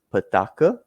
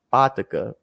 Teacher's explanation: For example, the word for dollar in Kristang, some families say it's petaka with emphasis on the second syllable, and some families say it's pataka with emphasis on the first syllable